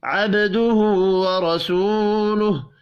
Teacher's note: عبدہ ورسولہ، با ساکن پر قلقلہ کریں گے، الٹا پیش ایک الف کے برابر کھینچ کر پڑھا جائے گا، ورسول را کو زبر کی وجہ سے پر پڑھیں گے، واو مدہ ایک الف کے برابر کھینچ کر پڑھیں گے